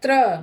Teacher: देखिए बोलते भी हैं हम त्र। र का पूरा उच्चारण करते हैं। त का आधा उच्चारण करते हैं। तो यह र जो है अ में अ जो है र में जुड़ जाता है।